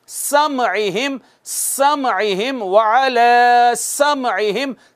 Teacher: सीन पे सीटी लगाना ज़रूरी है, सीटी बजाना ज़रूरी है